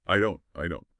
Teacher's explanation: That T on the end of don't is very often a stop T. Your mouth gets ready for the T, but you don't really push the air out. It just stops.